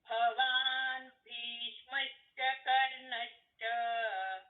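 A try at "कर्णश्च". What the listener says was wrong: ದೀರ್ಘ ಹೇಳಬೇಡಿ ಕರ್ಣಶ್ಚ ಅಷ್ಟೇ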